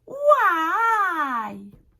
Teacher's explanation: Et parfois, sur une seule lettre, on monte et on descend.